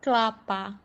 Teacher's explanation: Ke, la, pa. Namun, kelapa sering dilafalkan kelapa, sehingga silabel pertama hanya berupa satu konsonan, yaitu K. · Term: puncak silabis